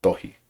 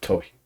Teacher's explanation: the T in Tongan, um, is unaspirated